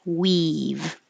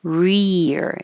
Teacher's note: your tongue is staying in the E very high position rear it goes back for the r up for the E